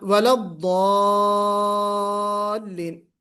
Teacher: اور وَلَضَّالِّينَ تھوڑا سا مت کیجئے، 6 حرکت کے برابر کھینچنا ہے لمبا